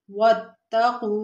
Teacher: واو تا زبر وتا زبر تا وتا قاف واو پیش کو واتقو واو ساکن اس سے پہلے پیش واو مدہ تھوڑا سا کھینچیے